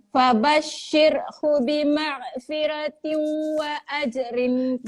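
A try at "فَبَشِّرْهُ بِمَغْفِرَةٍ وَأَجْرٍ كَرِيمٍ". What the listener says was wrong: Dia jadi keras balik tu. Okey, kenapa dia jadi magha? Sebab huruf ghin dia tak ada qalqalah. Jadi kalau dia tak boleh macam ni tau.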